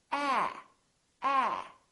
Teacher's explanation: so your lips are open and your tongue is down and your tongue is tense